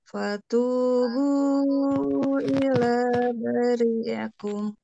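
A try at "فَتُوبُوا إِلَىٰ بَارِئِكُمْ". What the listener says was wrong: Ba-nya 2 harokat. Bari ulang.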